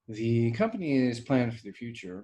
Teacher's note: starting and shifting a topic in a meeting with a high tone on the beginning of the sentence